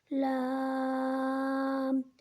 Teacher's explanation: لام کو 3 الف کے بقدر کھینچ کر پڑھیں گے